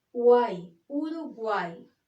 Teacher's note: cuando aparece al final de la palabra, adopta el sonido de la vocal I.